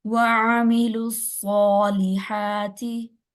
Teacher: आइन को लंबा नहीं होने देना, आ नहीं करना, आइन जबर आ